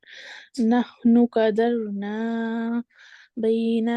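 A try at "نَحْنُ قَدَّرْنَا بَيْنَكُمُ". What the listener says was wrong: कदरना। बिल्कुल, कद्दर। दाल को सख्ती से पढ़ेंगे क्योंकि शद है।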